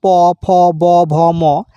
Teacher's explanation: অষ্ঠ বর্ণ বলতে বোঝায় সেই সমস্ত ব্যঞ্জন বর্ণকে যা উচ্চারণ করার সময় ঠোট দুটি স্পর্শ করে বা ঠোঁটের সাহায্যে উচ্চারিত হয়।